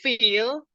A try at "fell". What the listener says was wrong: Fell. Fell. Kalau feel itu double E. Ini kan double L.